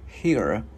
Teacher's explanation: Cái mình cong lưỡi chữ R vào.